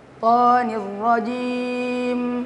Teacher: huruf mim itu punya sifat yang namanya sifat at-tawassut. Artinya mengalirkan suara sedikit atau suara itu antara tertahan dan mengalir. Ya. Jadi ketika disebutkan hurufnya atau dia berbaris, maka suara itu tidak mengalir. · ketika kita waqaf di huruf mim, maka diberikan aliran suara sedikit. Ya. Karena di dalam kaidah ilmu tajwid, huruf mim itu punya sifat yang namanya sifat at-tawassut.